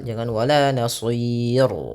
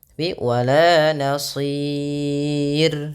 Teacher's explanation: Pada lafal sir rnya dibaca tipis, jangan dibaca tebal.